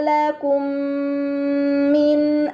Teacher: Pada kata lakum mina terdapat mim sukun bertemu dengan huruf mim, ini dinamakan idgham mimi. Maka mim sukun dibaca secara melebur dengan gunnah yang dipanjangkan.